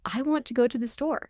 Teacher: You must internalize how want to effortlessly becomes wanna. This is a rhythm rule, not slang, and is absolutely essential to sounding fluent.